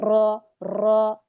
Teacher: रॉ में तकरार पाई जाती है, इसकी सिफत है। यानी जब हम रॉ को पढ़ते हैं तो इसमें रॉ, कई सारे रॉ की आपको आवाज आ रही है जब आप पढ़ेंगी, रॉ रॉ, ये इसकी सिफत है, ये इसमें मौजूद रहती है, ये लाजिम है, ये इसके अंदर पाई ही जाएगी, इसको आप रोक नहीं सकते।